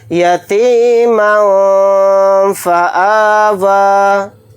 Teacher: یتیما فآویٰ کے اندر اخفا کا قاعدہ ہو رہا ہے، کیونکہ میم کے اوپر تنوین ہے، تنوین کے بعد فا آ رہا ہے. فا حروف اخفا میں سے ایک حرف ہے، تو یہاں پر اخفا کر کے پڑھیں گے.